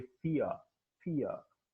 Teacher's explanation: the glide begins at E and moves towards A. The lips are neutral. The glide starts from a front unrounded wall just above the half close position and moves in the direction of central unrounded wall between half close and half open position और mid close और mid open position.